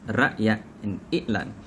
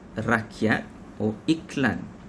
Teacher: Notice how the sound from ra'yat, i'lan becomes glottal stop